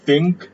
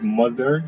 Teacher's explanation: the word think uses um the unvoiced version of the th sound and mother uses the voiced version